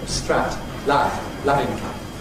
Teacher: Londoners often have a rather front vowel